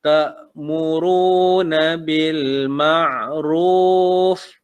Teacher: Huruf ain bil ma'ruf ain, bukan huruf K bil makruf, dia huruf ain, ataupun huruf alif bil ma'ruf, bukan, dia ain.